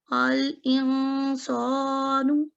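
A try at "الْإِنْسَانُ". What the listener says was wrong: सौ नहीं, ये सीन की आवाज है ना।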